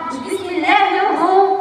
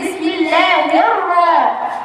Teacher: الراء ايضا حرف مشدد بالفتح وليس بالضم